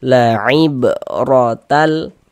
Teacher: maka huruf ra-nya kita baca tebal, tabkhim. sehingga pangkal lisan kita naik terangkat ke atas ketika kita mengucapkannya. Tebalkan huruf ro-nya.